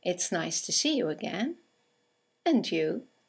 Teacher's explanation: And you is a statement. It has a falling intonation, and it's used to return the compliment or the greeting.